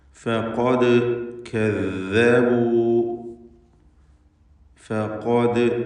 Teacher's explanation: فقد كذبوا فقد എന്ന് പറയുമ്പോൾ ഖാഫിന് മാത്രമാണ് തഫ്ഖീം വരുന്നത്. ഇസ്തിഅലാഇൻ്റെ അക്ഷരങ്ങളിൽപ്പെട്ടതാണ് ഖാഫ് എന്നതുകൊണ്ട് അതിന് തഫ്ഖീം ചെയ്ത് സ്വരഭാരത്തോടെ തടിപ്പിച്ച് ഉച്ചരിക്കണം. എന്നാൽ മറ്റക്ഷരങ്ങൾക്ക് തഫ്ഖീം വരാതെ ശ്രദ്ധിക്കണം.